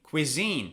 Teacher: Cuisine, it's on the second syllable.